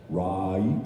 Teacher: There is a diphthong in right, that is you say right, you go from an A to an E